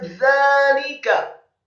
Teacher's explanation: za-nya dibaca tipis, lidahnya agak keluar sedikit, fathah dua harokat karena harokatnya tegak.